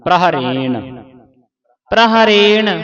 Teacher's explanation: ਪ੍ਰਹਰੇਣ ਉਚਾਰਨ ਕਰਨਾ ਜਲਦੀ ਦੇ ਨਾਲ ਪੜਨਾ ਤੇ ਪਿੱਛੇ ਨਾਣੇ ਦੀ ਆਵਾਜ਼ ਉਚਾਰਨ ਕਰਨੀ ਹੈ।